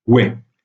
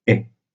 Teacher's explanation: Or, la tendance à l'époque du moyen français, c'est une tendance à la réduction de la diphtongue. Donc, ouai est souvent réduit à est.